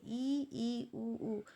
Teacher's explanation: जिन स्वरों के उच्चारण में मुख द्वार लगभग बंद रहता है, ई, उ, बंद ही रहता है लगभग, किंतु हम आवाज़ निकालते हैं, यह संवरित कहलाता है।